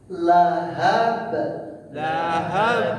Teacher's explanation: Huruf yang meletus, melantun, meledak. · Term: qol-qola